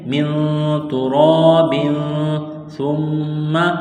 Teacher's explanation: ہے، را کے اوپر زبر ہے، الف سے پہلے زبر ہے، حروف مدہ الف ہے تو ایک الف کے برابر اس کو کھینچنا ہے